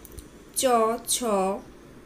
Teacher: বাতাস প্রথমে স্পৃষ্ট ধ্বনির মত মুখের মধ্যে সম্পূর্ণ রুদ্ধ হয় কিন্তু দ্রুত বের না হয়ে কিছুটা বিলম্বে ঘর্ষণ ঘর্ষণ ধ্বনি তৈরি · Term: ঘৃষ্ট ধ্বনি